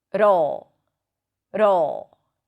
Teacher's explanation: You flip the tongue and you pull it in for the dark L.